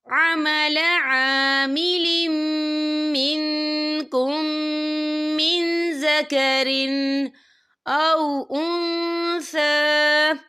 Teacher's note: عمل عامل منکم من ذکر، یا دیکھیں منکم، یہاں میم ساکن ہے، میم ساکن کے بعد جو ہے میم آ رہا ہے تو یہاں پر ادغام شفوی ہوگا، ہم پچھلے میم کو اگلے میم میں مدغم کریں گے اور ہم یہاں غنہ بھی کریں گے